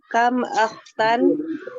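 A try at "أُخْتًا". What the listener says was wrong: masa kita bilangnya akhti atau ukhti ukhti ya.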